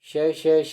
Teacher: दो उच्चारण अवयव इतनी निकटता पर आ जाते हैं, बीच का मार्ग छोटा हो जाता है तथा वायु उनसे घर्षण करती हुई निकलती है, ऐसे संघर्षी व्यंजन कहलाते हैं।